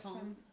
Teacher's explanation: And the E-N work together. So because E attracts the N and make it a nasal sound, then you do not even close your mouth. Because if you close your mouth, you're going to want to say N.